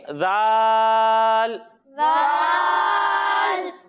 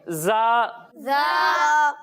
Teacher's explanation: جب ہم ذال کی ادائیگی کریں گے تو اس میں سیٹی کی آواز نہیں آئے گی، اور جب ہم زا کی ادائیگی کریں گے تو اس میں سیٹی کی آواز آئے گی۔